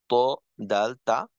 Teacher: জিহ্বার আগা সামনের উপরের 2 দাঁতের গোড়ার সঙ্গে লাগাইয়া